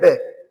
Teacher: बे का जो उच्चारण करते हैं हम किससे करते हैं, दंत ओष्ठ से करते हैं